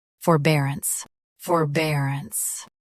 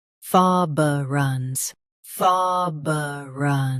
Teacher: US uses for, UK uses fa.